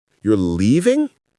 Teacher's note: Emphasis on leaving. Voice up. Surprised about the action.